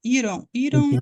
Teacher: eu posso trocar por um R se vocês quiserem ir ir só que é aquele r na ponta da língua